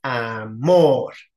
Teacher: tiene su sílaba tónica en la última sílaba de izquierda a derecha, ¿sí? En or. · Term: aguda